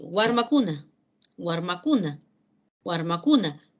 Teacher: La fuerza de voz recae, sigue recayendo en la penúltima sílaba.